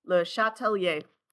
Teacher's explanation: there's a little bit of an accent on the first one and then the main accent's on the last one